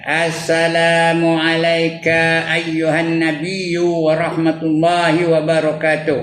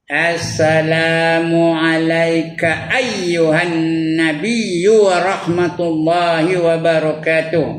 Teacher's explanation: Ka jangan panjang. You jangan panjang.